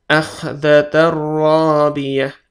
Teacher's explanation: Masuk langsung karena tanwin bertemu ro ya, ro ya. Tapi tidak ditahan 2 ketukan, langsung saja. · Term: idgham tanpa gunnah